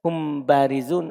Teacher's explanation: Ketika mim sukun ketemu ba, didatangkan sebagian hurufnya, dan satru dzatihi, menyembunyikan zatnya. Ketika ada mim sukun ketemu ba, sembunyi mim, hanya ada sebagiannya saja. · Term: ikhfa